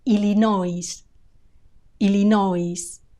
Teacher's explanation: illino illino notice the final s it's not silent Illinois Illinois also notice the stress illino it's on the o